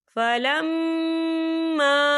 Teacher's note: یہاں میم مشدد ہے، یہاں پر غنہ ہوگا، یہاں پر الف مدہ بھی ہو رہا ہے، خال الف سے پہلے زبر ہے، تو ہم اسے 2 یا 3 حرکت کی برابر کھینچی پڑھیں گے۔